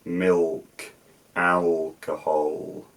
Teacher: So a L sound, as in let. But at the end of a syllable, I'll use a velarized L sound, as in milk, alcohol, things like that.